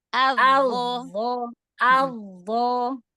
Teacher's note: Dho kan keluar ujung lidahnya.